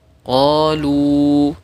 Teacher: Kemudian ada waw sukun didahului dhammah, qalu dibaca panjang 2 harokat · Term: huruf mad